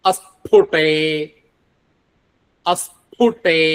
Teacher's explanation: ടേ എന്ന് പറയുമ്പോഴും ഖരമാണ്. അത് മൃദുവാവരുത്.